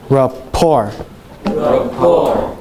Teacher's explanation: Yeah, say it again, but don't say the T. It's a French word and the T is silent.